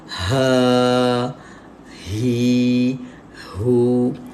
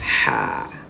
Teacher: Menyempitkan ruang rongga angin daripada bahagian halkum bila menyebut huruf ha pedas. Beza dengan ha simpul.